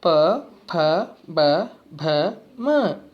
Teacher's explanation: ऊ में होठों की आकृति गोल होती है और पैफ में दोनों होठ परस्पर मिलते हैं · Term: ओष्ठ